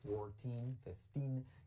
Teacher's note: En las pronunciaciones de las letras clave, 14, 15, y ahí sí que se hace pura I en la segunda sílaba y acentuando un poquito más en la segunda sílaba para diferenciarlo, como decimos, con las otras cifras más grandes.